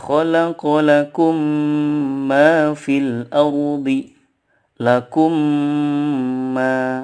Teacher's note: idgham selain disini adalah ketika mim sukun bertemu dengan mim lagi cara membacanya adalah dengan membaca mim sukun disertai guna yang ditahan 2-3 harokat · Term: idgham mislain